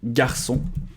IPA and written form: gaʀsɔ̃ (garçon)